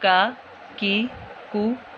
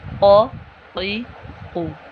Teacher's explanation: نقطوں والے کاف کو پر موٹا پڑھنا ہے اور جہاں پہ ہمارا کوا ہے وہاں سے ادا ہوگا